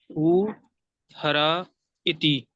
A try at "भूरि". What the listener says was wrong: हरा नहीं, री पढ़िए, री पढ़िए, भू री।